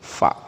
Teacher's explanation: cara baca huruf fa, bibir bawah ketemu gigi atas